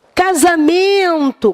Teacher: a palavra casamento tem a sua tônica na penúltima sílaba portanto ela tem a sílaba tônica na paroxítona é todo dia